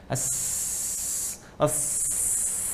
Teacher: Ya, hamas itu lawannya jahar. Ya, jadi nafas tetap mengalir ketika menyebutkan hurufnya, itu hamas